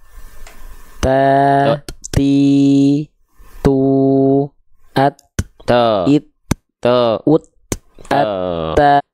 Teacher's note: nggak dibaca sa, si, nggak mengalir begitu, tapi hanya percikan nafas saja · dia terdengar ada percikan nafas